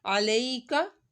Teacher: یا ساکن سے پہلے زبر آ رہی ہے تو یا لین ہو رہا ہے، یا لین پہ کھینچا نہیں جاتا